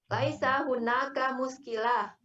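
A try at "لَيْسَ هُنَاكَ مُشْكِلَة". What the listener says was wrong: Nggak boleh muskilah, panjangnya. Laisa hunaka muskilah. Pendek semua itu.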